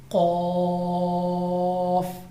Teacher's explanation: یہ لفظ زبان کی جڑ اور تالو کے نرم حصہ سے ادا ہوتا ہے